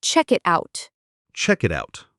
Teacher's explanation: The K at the end of check links to the I in it, and the T at the end of it sounds a bit like a soft D when it links to out. So, it sounds like check it out. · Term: connected speech